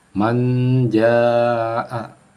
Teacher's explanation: nun mati bertemu huruf jim. Jadi nun sukun bertemu huruf jim, maka membacanya adalah disamarkan. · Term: ikhfa